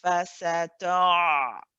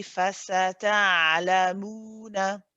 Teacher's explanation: you hold the ayn for the tawassut, and then you go onto a nice light lam.